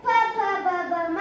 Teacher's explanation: ಹೊಟ್ಟೆ ಉಸಿರನ್ನ ಹೊರಬಿಡುವಾಗ ಎರಡು ತುಟಿ ಮಧ್ಯ ಬಂದ್ರೆ ಪ ಪ ಬ ಬ ಮ ಆಗುತ್ತೆ